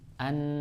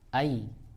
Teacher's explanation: dari belakang tidak naik, maka dia istifal.